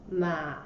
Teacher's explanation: it goes down at the beginning and then goes up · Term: third tone